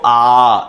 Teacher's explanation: ये विवृत स्वर है जिसमें पूरा मुख खुलता है।